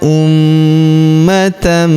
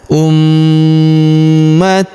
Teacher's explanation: huruf ma berharakat tasydid maka kita tahan dan kita tekan serta kita dengungkan dua sampai harakat ya karena terdapat tanda tasdid di atasnya.